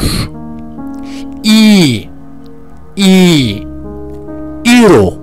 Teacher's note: Türkçedeki i sesi gibidir ama ondan daha uzundur